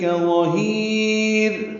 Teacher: ظہیر میں لا پر پڑھیں گے، ہا کو لمبا کریں گے اور را باریک پڑھیں گے. وقفاً ظہیر مد عارض سکون ہے، اس لیے ہا کو لمبا کریں گے.